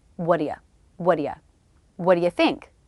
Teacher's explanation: I'm dropping the T in what and reducing the vowel in you to the schah as well what you what do you what do you think that makes